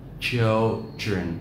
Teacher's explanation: Trọng âm rơi vào âm tiết thứ nhất.